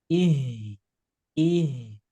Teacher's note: Jadi si pita suaranya kebuka ya. Ketika ngucapin huruf H, si pita suaranya kebuka.